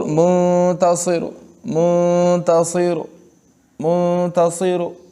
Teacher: را کے پیش کو چھوٹا سا ادا کرنا ہے، اس کو ساکن بھی نہیں کرنا اور اس پر پیش بھی پورا نہیں پڑھنا۔ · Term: روم